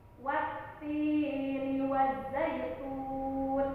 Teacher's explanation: Wattini kita baca 2 harakat karena ada ia bertemu dengan kasroh, itu dinamakan mad tabi'i.